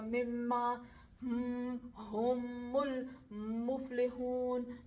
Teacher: ناک میں بھی ہلکی سی وائبریشن ہوتی ہے میم کے مخرج میں